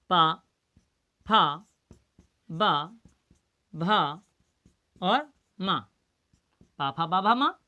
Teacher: जैसे हमें कहना है पा, तो हमारे ओंठ दोनों स्पर्श कर रहे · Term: ओष्ठ